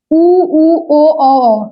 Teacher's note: जिन स्वरों के उच्चारण में ओठ वृतमुखी या गोलाकार होते हैं उन्हें हम वृतमुखी कहते हैं।